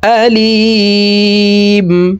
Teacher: আলিমুন মিমকে ওয়াকফের ক্ষেত্রে সাকিন করে ফেলবো